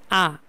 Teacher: আ এটি হচ্ছে বিবৃত, সবচেয়ে বেশি ঠোঁট উন্মুক্তি হয়